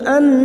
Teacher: nun yang bertasdid gunna musyaddadah kita dengungkan selama 3 harakat